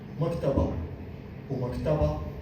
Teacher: المكتبه هنا في الاول في نبر في المقطع الاول، لكن مكتبه النبر في المقطع الاخير هنا